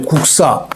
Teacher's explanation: 뒤에가 예사소리가 된소리 쌍시옷으로 발음 나죠